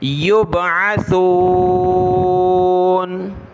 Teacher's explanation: قال انظرنی الی یوم یبعثون، سین کو نہیں پڑھنا یہاں پر، یبعثون نہیں کرنا، سا پر زبان نکال کر پڑھیں نرمی کے ساتھ